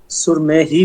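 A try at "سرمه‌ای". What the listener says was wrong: সুরমেহ না হেটা উচ্চারণ হবে না সুরমেই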